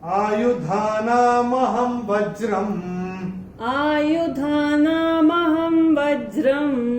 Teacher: अनुस्वार का उच्चारण केवल और केवल म ही होगा, क्योंकि चरण की समाप्ति पे आ रहा है।